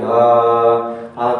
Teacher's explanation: हा का उच्चारण करेंगे तो आप पाएंगे कि स्वर तंत्रियों में कंपन हो रहा है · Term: सघोष